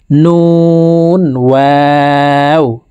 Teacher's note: ওয়াও হরফকে ঠোঁট গোল করে দুই ঠোঁটের মাঝে ফাঁকা রেখে উচ্চারণ করে পড়তে হবে